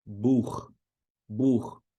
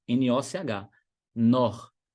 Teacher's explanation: CH, depois das vogais A, O, U, é um rasgadinho.